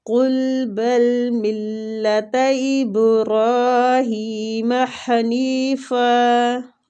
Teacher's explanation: را کھڑی زبر کی وجہ سے کھینچیں گے اور پور بھی اس کو پڑھنا ہے